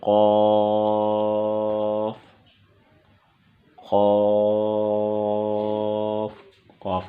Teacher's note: قاف، قاف، قاف کا مخرج قاف کی ادائیگی کی جگہ زبان کی جڑ کوے کے قریب جب نرم تالو سے لگے اس سے قاف ادا ہوگا